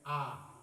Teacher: In the middle and the final position of a word, it gives the sound of the long vowel a, as in English car.